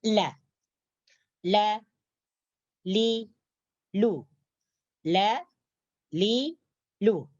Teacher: Tepi hujung lidah tersebut diangkat menyentuh langit-langit atas, menyentuh sini. Jadi ketika mengatakan huruf lam, maka tepi hujung lidah kita akan menyentuh langit-langit atas. Terkhususnya langit-langit atas bagian depan.